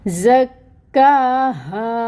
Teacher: اور یہاں پر دیکھیں الف ساکن سے پہلے ہا کے اوپر فتح کی حرکت، تو یہاں پہ بھی الف مد کا رول ہو رہا ہے، تو اس ہا کو بھی 2 کاؤنٹس کے برابر لمبا کھینچیں گے، اور یہ جو ہا ہے یہ اقصا الحلق سے نکلے گی۔